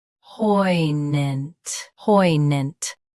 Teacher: Stress, poi. Keep gnant soft and quick.